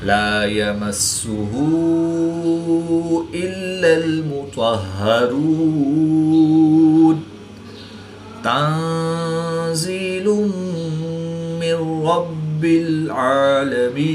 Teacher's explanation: طا حروف مستعلیہ میں سے ہے تو اس کو پر یعنی موٹا پڑھیں گے۔ را پر پیش ہے تو را کو پر یعنی موٹا پڑھیں گے۔ واو ساکن سے پہلے پیش ہے تو واو مدہ کے بعد نون کی زبر کو وقف کی حالت میں ساکن کریں گے تو یہاں پر مد عارض ہوگی، 2 سے 3 الف تک کھینچ کر پڑھیں گے۔